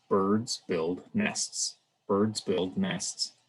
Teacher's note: it contains three content words birds build nests birds build nests every word receives equal stress and equal time within an english sentence here because they're all content words